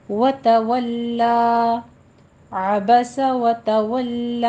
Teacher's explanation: لام باریک ہی رکھنا ہے، اس کو موٹا نہیں کرنا